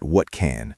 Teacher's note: The T in what hits the C and can. That is a stop sound. So, the T disappears or changes to a glottle stop.